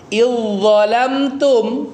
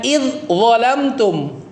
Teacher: Nah, ingat ketika ada dua huruf yang bertemu huruf pertamanya kosong, huruf keduanya ada tasdidnya, maka huruf pertamanya melebur sempurna ke huruf kedua